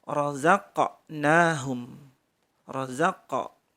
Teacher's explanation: Kemudian razaqnahum, qafnya memantul, razaqnahum, razaqa, mantul ya